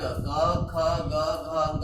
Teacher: क वर्ग क, ख, ग, घ, अंग का उच्चारण कंठ से होता है, इसीलिए इसको कंठ्याः कहते हैं